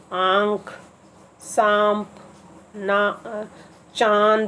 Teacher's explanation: अनुनासिक ध्वनि चांद का उच्चारण नाक और मुंह दोनों से किया जाता है